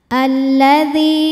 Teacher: Sebab ada ya sukun sebelumnya berharokat kasroh. Cara membacanya huruf dzal dipanjangkan 2 harokat. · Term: mad tabi'i dhahiri